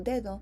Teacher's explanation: the ds in spanish might be seen with a negative vot